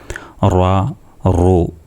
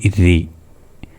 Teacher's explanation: തഫഹീമായിട്ട് നാവിന്റെ ഗതി ഒന്ന് ഉയർത്തി വായ നിറച്ചിട്ട് പറയണം